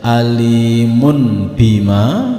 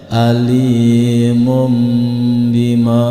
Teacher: dhammahtain di sini yang bunyinya n berubah menjadi m ketika bertemu dengan huruf ba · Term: bacaan iqlab